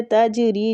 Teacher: جیم جو ہے ساکن ہے، اس پہ کلکلہ ہوگا